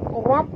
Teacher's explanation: Rab, huruf ra ni kena baca tebal. Ra baris atas, ra tafkhim kena baca tebal. Bertemu dengan ba dan di atas ba ada tasydid, maka kita kena baca tekan ataupun jud.